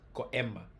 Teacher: You have to have a occlusão glutal, a glottal stop.